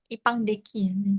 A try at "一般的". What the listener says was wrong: Ya, T, T. Deki jangan. Terus, T. Ini salah Ipang teki. Ipang teki.